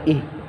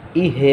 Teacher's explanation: না এটা ধরে রাখতে হবে জজমের কায়দা আমি আগেই বলছি যে জজম স্পষ্ট করে ধরে রাখতে হবে এটা ছাড়া যাবে না ইহ ছাইড়ে দিলে ইহে হয়ে যাবে